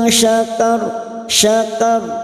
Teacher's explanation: ra sukun yang sebelumnya fathah kita baca tafkhim.